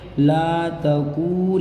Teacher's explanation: वाऊ मद्दा को एक अलिफ के बराबर खींचेंगे।